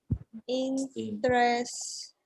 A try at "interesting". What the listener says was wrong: Interest, como que se saltan la esta, interesting. Interesting.